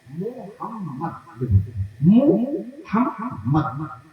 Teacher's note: এই রাসূলের যে নাম মুহাম্মদ, এই নামের মধ্যে দুই ঠোঁটে দুবার মিলন আছে।